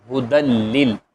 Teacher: یہاں پر غنہ نہیں ہم کریں گے کیونکہ یہ قاعدہ ہے کہ لام اور رائیں نون ساکن تنوین کے بعد تو ملاتے تو ہیں، غنہ نہیں کرتے